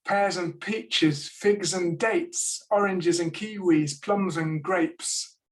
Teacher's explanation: the d of the and disappears that's typical in normal speech